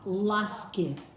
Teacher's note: This time it's not a liquid L. It's just a hard L. It's not la, it's la.